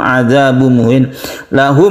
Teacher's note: mim mati bertemu dengan Ain kita sebut dengan izhar syafawi tidak dengung